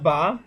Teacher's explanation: দুই ঠোঁটের ভিজা অংশ একসাথে লাগিয়ে উচ্চারিত হবে